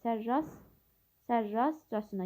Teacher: yəni vurğu ilk hecada yox, ikinci hecadadır.